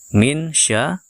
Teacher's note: hukum ikhfa di sini kita siap-siap ke huruf syin ya kita samarkan dan juga kita berikan dengungnya